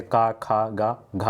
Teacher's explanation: का वर्ग का, तो इनका उच्चारण स्थान कंठ से होता है